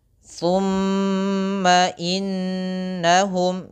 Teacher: tahan dulu gunnahnya, tahan dulu suara m-nya karena dia termasuk hukum bacaan gunnah. Inna sama ditahan.